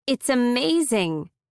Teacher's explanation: It sounds like the S moves to the beginning of amazing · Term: linking